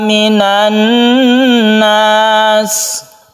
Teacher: Minan nas ada tasydid nun yang terbentuk dari al bertemu dengan nun kita sebut dengan idgham syamsiyah. Kita dengungkan karena tasydid nun itu adalah bersifat gunnah.